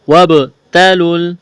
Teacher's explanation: قلقلہ کہتے ہیں ساکن حرف کو ہلا کر پڑھنا۔ وابتلوا تا کو باریک کرنا ہے، جلدی پڑھنا ہے